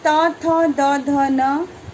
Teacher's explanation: उच्चारण स्थान इसका दंत है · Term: तवर्ग